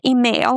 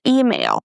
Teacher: So, it's not email. We don't stress mail. We stress e, the first sound